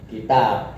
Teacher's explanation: Ta itu mahmus, hasahu saksun sakat fakot ta. Nah, maka ba yang majhur karena dekat dengan ta, maka suara ba nek diwaqafno menjadi mahmus. · Waqat yuhmasu sautul ba al arabi fi ba'di mawaqi'i kalba nahu kitab. Ba itu suara majhur tetapi kadang juga diucapkan dengan suara yang mahmus. Kita suaranya digetarkan.